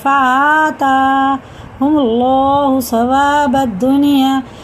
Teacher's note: دونوں برابر کھینچیں گے کیونکہ دونوں پہ کھڑا زبر ہے